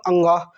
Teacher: सभी वर्गों के अंतिम वर्ण, इनका उच्चारण स्थान नासिका होता है। मतलब ये सभी हमारे नाक से बोले जाते हैं।